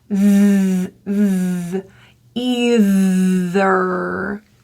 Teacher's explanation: This is a voiced TH. Putting your tongue between your teeth and vibrate on your throat.